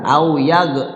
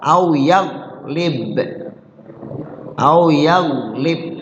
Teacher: Nah, yaglib go bersukun ini enggak kolkola, keseringan itu go dikolkolain.